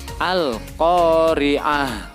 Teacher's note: tak marbutoh dari lafadz al-qari'ah ini diganti menjadi sukun dan berbunyi layaknya hak yang disukun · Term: waqaf ibdal